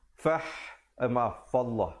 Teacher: perkataan Allah jika datang sebelumnya baris atas, dibacakan dengan tebal. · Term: Lafzul jalalah